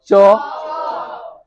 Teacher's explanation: आपका जीभ तालो में सट रहा है